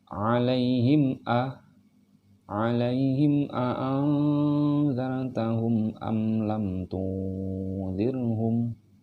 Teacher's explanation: Jadi tidak boleh ada penahanan di sini, tidak boleh ditahan-tahan. Jadi langsung lompat dari suara him langsung ke hamzahnya. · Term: izhar syafawi